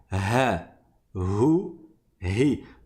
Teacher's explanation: Donc on va resserrer et on va frotter. Et le ha, c'est au fond de la gorge. Donc c'est plus bas et on va laisser vibrer.